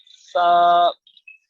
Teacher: اوپر والے جو دانت ہیں ان کے کناروں سے سا ادا ہوتی ہے